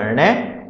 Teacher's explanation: इसका उच्चारण स्थान है मूर्धा लेकिन ये नासिका से भी बोल सकता है